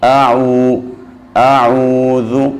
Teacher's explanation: جب بھی ذال کو ادا کرنا ہے، اپنی زبان کو جو سامنے بڑے دو دانت اوپر والے ان کے نو کے ساتھ لگائیں گے تو ذال صحیح طریقے سے ادا ہو جائے گا۔ اعوذ، اور جب ہم نے اعوذ کو پڑھنا ہے تو ہماری آواز ناک میں نہیں جانی چاہیے، اعو ایسے نہیں ہونا چاہیے، اعو اعوذ ایسے۔